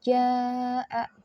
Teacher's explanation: mad yang bertemu dengan hamzah dalam satu kalimat, maka panjangnya 4-5 harokat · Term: mad wajib mutasil